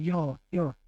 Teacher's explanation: तो य का उच्चारण होगा तालु से।